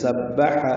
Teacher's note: سبح ہا وسط حلق سے ادا ہوگا